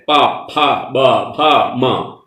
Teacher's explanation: പ ഫ ബ ഭ മ അതൊക്കെ ചുണ്ടിന്റെ വ്യത്യാസം കൊണ്ടുണ്ടാവുന്ന ശബ്ദത്തിൽ വരുന്നതാണ്